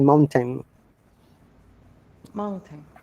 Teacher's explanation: British accent, in RP accent, we do not use glottality that much. Okay, so we say simply mountain.